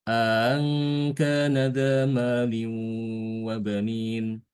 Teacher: Jadi nanti bacanya untuk Imam Hisham kita baca dengan idkhol. Idkhol hamzah yang kedua nanti ditasil. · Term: idkhol dengan tasil